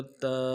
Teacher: تا کو نرمی سے پڑھیں گے، کھڑا زبر کو ایک الف دار میں کھینچیں گے۔